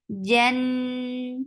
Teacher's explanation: Mim will get sifa of tawassut. Hum Jan for fatha open your jaws attached with noon. Noon will get sifa of gunna. Jan and then it is two counts long.